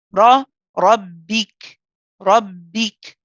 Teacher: So this is the one where we do lift the back of the tongue and we do push a bit back. The tip of the tongue goes to the makhraj, which is raised behind the upper two front teeth or the upper two incisors. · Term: heavy ra